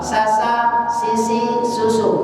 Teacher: Sin kalau ada ujung lidah kena ujung gigi seri atas dan bawah